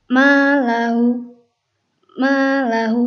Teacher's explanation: Jadi huruf ma-nya itu berharokat ya. Tidak ada dengungnya sama sekali, datar bacanya seperti biasa saja ya.